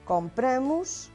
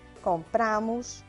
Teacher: Também esta distinção podemos apreciá-la para distinguir o presente do indicativo do pretérito perfeito simples na pessoa nós. Compramos no presente do indicativo com A fechado e compramos no pretérito perfeito simples com A aberto.